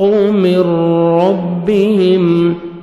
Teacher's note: ادغام کرنا ہے بغیر غنہ کے ساتھ، نوز میں ساؤنڈ نہیں لے کے جائیں گے ، نون سکون چھوڑ دیں گے، میم کو ہم را شد